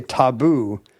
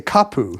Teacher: the T of other Polynesian cultures became a K in Hawaii